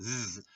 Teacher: throat and pronounce the and pronounce the sounds s and Z you can feel your throat and vocal cords vibrate the the this vibration is called voicing it sounds like s